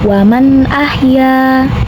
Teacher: Kemudian terdapat hukum idhar halki, di mana terdapat huruf nun sukun yang berhadapan dengan huruf halki atau huruf tenggorokan. Maka nun sukun dibaca atau dibunyikan dengan jelas. Jadi masih huruf asal n dan jangan ditahan.